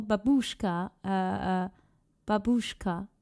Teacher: My Polish grandmother and parents always put the stress on the second syllable.